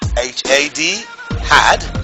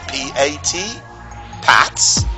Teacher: the mouth is open, the tongue swells in the front part, and the sound comes from the frontal part of the mouth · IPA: /æ/